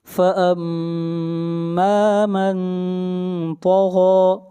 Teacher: طا اور غائن یہ دونوں حروف مستعلیہ میں سے ہیں، دونوں کو موٹا پڑھا جائے گا